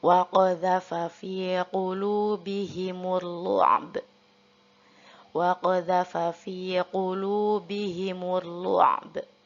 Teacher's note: untuk ba kita waqafkan, kita qalqalahkan baca dengan b